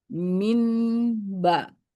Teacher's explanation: dibaca iqlab di mana nun sukunnya dibunyikan mim dan didengungkan